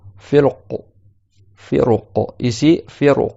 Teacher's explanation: Comme il y a une lettre emphatique après, le ra, tu vas le faire emphatique aussi pour qu'il puisse correspondre à la lettre d'après.